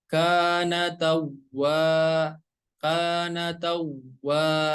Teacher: Dan berikutnya ada huruf waw yang bertasydid. Maka cara membaca huruf waw yang bertasydid itu harus ada nabroh atau hentakan.